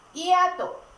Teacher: En la palabra hiato no se pronuncia la H.